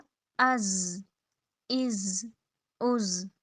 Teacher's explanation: जा लेटर सख्ती और सीटी से।